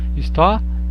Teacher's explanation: Perceba que o A é mais forte do que o I. Então a vogal está depois da semivogal. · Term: ditongo crescente